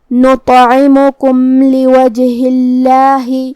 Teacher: آخر میں میم ساکن ہے، پھر حرف اللام ہے، لام حروف الاظہار الشفوی میں سے ہے، تو ہمیں یہاں میم کو ظاہر کرنا ہے اور بغیر غنہ سے یہ حکم کو ادا کریں گے